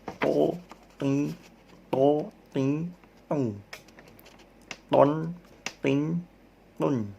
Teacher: Kalau to, ujung lidahnya naik, pangkal lidahnya naik, mohon maaf. Jadinya suara tebal. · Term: huruf to